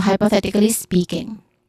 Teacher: Then speaking, spe, which is the first syllable is a stress syllable, has a long e sound, and then king has a short e sound with an ng or nasal sound at the end. So hypothetically speaking.